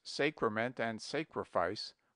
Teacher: he invariably says Sacrament and sacrifice with a very long a